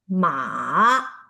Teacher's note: The third one goes down and then rise again